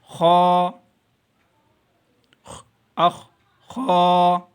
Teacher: حلق کا جو پہلا حصہ ہے جو منہ کی طرف ہے یہ اس حصے سے ادا ہوگا